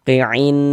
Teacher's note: Jadi bagian ainnya itu suaranya itu kita tahan, kita panjangkan sebentar sepanjang 2 harokat.